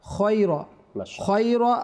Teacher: এটা হরফে মুস্তালিয়া, ইস্তালার হরফ, এটা সর্বদা সবসময় মোটা করে তথা মোটা করে পড়তে হবে। খাইরা আমরা পড়বো না, খয়রা, খয়রা হাযিহিস সুকি, খয়রা হাযিহিস সুকি ওয়া খয়রা মা ফিহা, খয়রা হাযিহিস সুকি ওয়া খয়রা মা ফিহা।